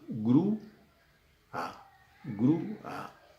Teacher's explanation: Se escriben juntas, pero en la pronunciación, la U acentuada se va a una sílaba y la A se va a la otra sílaba. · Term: hiato